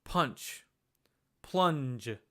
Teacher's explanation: this is the nasal sound that comes before a palate consonant. So in English, when you say words like punch, plunge, that sound, that is the nasal element for the palate based.